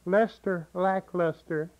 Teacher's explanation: it's a very flat voice. Monotone, very nasal. It's just a test of nasal there.